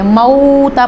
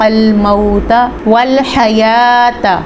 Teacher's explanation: یہاں پہ واو ساکن سے پہلے زبر ہے تو واو لین کا قاعدہ ہو رہا ہے، اب اس ورڈ کو لمبا نہیں کر سکتے